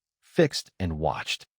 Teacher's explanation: Fix ends with the K and S sounds, and watch ends with CH. Both are voiceless, so both past forms use the T sound.